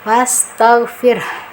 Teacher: Tetap ke mahroj ha besar ini yang ada di tenggorokan bawah ya. Nah, walaupun tidak keras tapi harus dibunyikan vokal huruf h-nya